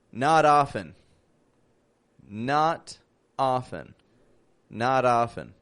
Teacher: the t turns to a d